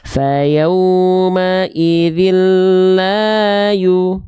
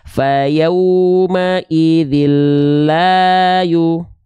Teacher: Yang satu pakai nada, yang satu enggak, tapi 2 kadarnya sama.